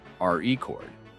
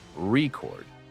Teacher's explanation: the stress is on the first syllable, RE chord, when it's used as a noun, and on the second syllable, record, when it's used as a verb